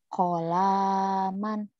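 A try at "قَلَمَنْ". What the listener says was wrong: Kolaman, enggak ada yang panjang, ini bukan alif, ini lam. Bukan, kan enggak ada pemanjangnya.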